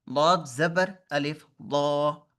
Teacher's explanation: मैं अपनी जुबान अपने साइड वाले दांतों पे लगा रहा हूँ, जुबान का किनारा